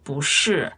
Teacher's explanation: Just then it sounded like the 不 turned into a second tone instead of the fourth tone.